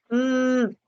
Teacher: nariz vas a sentir mm como hay una vibración ahí no el aire como que resuena en la cavidad nasal